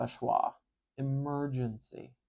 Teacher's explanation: it's a very weak vowel it's very short and featureless and it doesn't carry any stress it's very relaxed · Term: schah